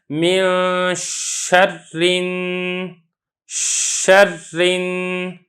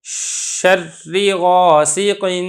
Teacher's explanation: شین میں صفت تشفی ہے، یعنی منہ میں صوت پھیلتی ہے۔ یہ صفات غیر متضادہ میں سے ایک صفت ہے کہ جب آپ شین کو ادا کریں تو آواز آپ کے منہ کے اندر پھیل جانی چاہیے، یہی مطلب ہے تشفی کا۔